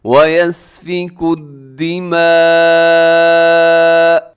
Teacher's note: یہاں پر لکھا ہوا ہے دماء، لیکن وقف کر لیں گے ہم کیونکہ جیم کی علامت ہے، تو وقف کرتے ہوئے آخر میں حمزہ زبر کو ہم ساکن کر دیں گے اور جھٹکے کے ساتھ تھوڑا روکیں گے، لیکن بہت زیادہ جھٹکا بھی نہ ہو